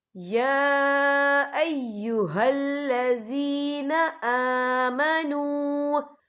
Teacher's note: یا دیکھیں آمنوا، یہاں پہ واو مدہ بھی ہو رہا ہے، واو ساکن ہے، واو ساکن سے پہلے پیش ہے اور اس پہ چھوٹی سی مد بھی ہے، تو ہم یہاں 3 یا 4 حرکت کے برابر کھینچ کے پڑھیں گے